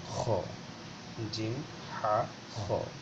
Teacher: এটা খা আমরা যেটা বলি, জিম, হা, খা, এই খা এটা উচ্চারণ হবে কিন্তু খ, একটু মানে ইয়ার মতো করে গলা থেকে একটু খাঁকারি দিয়ে খ